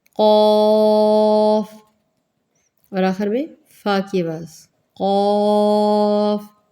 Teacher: قاف قاف، بالکل یہ جو ہمارا قلقلہ کرنے والی جو جگہ ہوتی ہے حلق، اس کے آگے سے اس کو ادا کریں۔ قاف موٹا کریں، ہونٹوں کو گول نہیں کرنا، حلق سے ادا کیا جائے گا۔